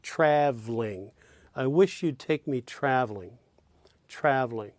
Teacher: in the three-syllable word traveling. It's almost as though you're omitting the second syllable and saying traveling.